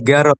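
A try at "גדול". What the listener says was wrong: Bait gadol, ini dalet, ada ekornya. gadol, ini ada ekornya. Kalau res, makanya ini dalet sama res itu mirip-mirip. kalau dalet dia ada ekornya di sini.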